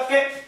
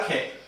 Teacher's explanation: यहाँ के में कम मात्रा में हवा बाहर निकली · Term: अल्प प्राण